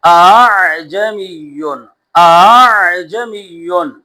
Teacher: دوسرے حمزہ کو نرم پڑھیں گے · یہ حمزہ نہ خالص الف مدہ ہو نہ خالص حمزہ ہو، دونوں کے درمیان نرمی سے پڑھنا ہے۔ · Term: تسہیل